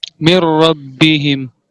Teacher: نون کا غنہ باقی نہیں ہے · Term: ادغام صغیر متقاربین تام